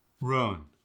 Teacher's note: The U sound doesn't get pushed so far up and back. It's actually pushed forward a little bit, but not as much as the South.